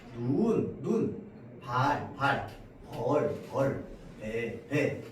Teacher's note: 소리의 길이 차이로 뜻이 달라집니다